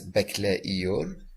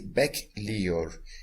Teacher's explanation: The last vowel is going to drop, and the suffix itself is going to just attach the vocabulary. So here we are not going to sound this as bekleiyor.